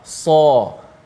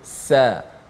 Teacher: Sad itu tebal, sin tu nipis.